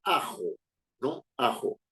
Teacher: se clasificada como grave o llana cierto es la que tiene la sílaba tónica es decir la sílaba donde se da el golpe más fuerte de voz en la penúltima